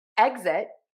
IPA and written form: ˈɛgzɪt (exit)